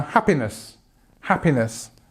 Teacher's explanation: this stress at the beginning of the word happiness